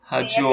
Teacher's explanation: Então, na verdade, a sílaba tônica é o O, não é o DIO.